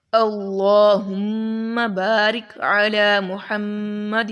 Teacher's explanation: یہاں پر بھی اللہ جو لام ہے وہ موٹا پڑھیں گے، پچھلے والا ہی ہے، اس میں میم کے اوپر شد ہے، اس پر غنہ کریں گے